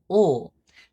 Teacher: before a consonant or at the end of a word, that alveolar tap has an allophonic variation. It turns into an alveolar lateral approximant, aka ul. See, the only difference between that tap ra and ul is that the tap, by definition, only taps the alveolar ridge.